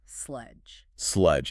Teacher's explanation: But the E is completely silent. The word must end with that soft buzzing friction. Your tongue taps the roof of your mouth and releases the air slowly. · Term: soft J sound